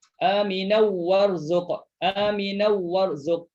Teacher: Idgham bila gunnah. Masukkan tanwin dalam waw. Jangan dengung.